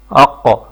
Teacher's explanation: زبان کی جڑ اوپر نرم تالو کے ساتھ لگے تو قاف ادا ہوتا ہے